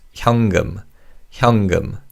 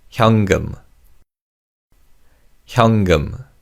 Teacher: the 니은 받침 in the first syllable is pronounced as 이응. So it's 현금, 현금.